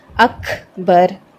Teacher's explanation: اکبر کر کے نہیں پڑھنا، اک پر آپ کی آواز رکنی نہیں چاہیے، آپ کی سانس باہر آنی چاہیے، اکبر۔ اور آخر میں را بھی ہیوی پڑھا جائے گا، اکبر، اکبر۔ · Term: ہمس